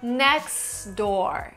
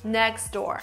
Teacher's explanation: So there is no T, it's just the D. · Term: elision